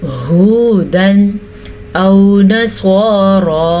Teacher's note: हा के तलफ़्फ़ुज़ का ध्यान रखना है, हा हलक के आखिरी हिस्से से निकालना है, इसको हुदन नहीं पढ़ना। · स्वाद को पुर पढ़ना है क्योंकि स्वाद के ऊपर स्वाद हमेशा ही पुर पड़ जाता है, जबकि रा खड़ी ज़बर की वजह से पुर पड़ी जाएगी।